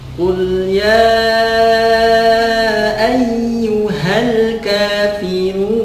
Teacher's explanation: ketika al-kafirun si bibirnya dimonyongkan secara sempurna